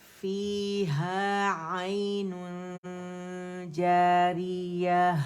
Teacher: اچھا، اخفا کا رول کیا ہے کہ جب ہم دیکھیں کہ حرف اخفا آ رہا ہے نون ساکن یا تنوین کے بعد، رائٹ اوے ہم نے جیم کے مخرج کے قریب جانا ہے. ٹچ نہیں کریں گے اسے، غنہ ریٹین کرتے ہوئے یا نون کو چھپاتے ہوئے، ٹھیک ہے؟ اور 2 کاؤنٹ کا کاملہ گریڈ کا ہم نے اخفا کرنا ہے.